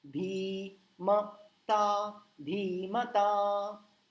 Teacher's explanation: म को लंबा नहीं खींचा मैंने, धी को खींचा, ता को खींचा